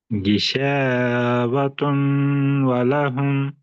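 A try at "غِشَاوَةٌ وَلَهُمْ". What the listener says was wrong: तुन नहीं, तुम वाव के साथ मिलाइए, गिशावतुन वलहुम,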